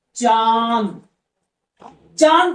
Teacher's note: जब मुख से ज्यादा आवाज आए नाक से कम तो होता है चंद्र बिंदु का प्रयोग